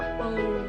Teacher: नाक से साउंड निकलता है, अंग बोलते हैं।